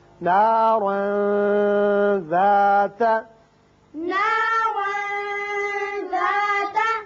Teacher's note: تنوین کے بعد حروف اخفا میں سے ذال ہے، لہذا یہاں تنوین کے نون پر اخفا ہوگا